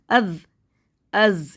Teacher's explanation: ज़बान दांतों में बाहर आएगी ज़बान